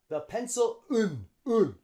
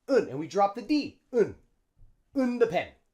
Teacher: So the L in pencil links onto the schwa in and.